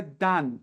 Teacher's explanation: Então aqui é dan, aberto, não é dan